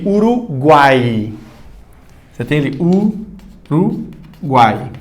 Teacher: O U é semivogal, o A, que é uma vogal, e o I é semivogal. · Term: tritongo